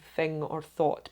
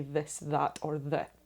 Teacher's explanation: versus unvoiced right that's right yeah that's how it's differentiated so your vocal chords don't vibrate when saying thing or thought but they do when you say this that or that